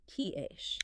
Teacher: >> Exactly. You block the air with T and explosively release it into shh.